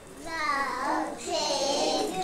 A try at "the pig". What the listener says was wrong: Good. You did that without my help.